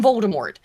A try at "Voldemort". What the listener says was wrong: On this channel, we do not pronounce the last T.